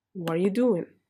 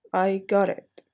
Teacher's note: if the vowels were before and after the t letter so you should pronounce it as R